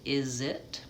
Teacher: that Z sound kind of goes onto the word it. We link is and it is.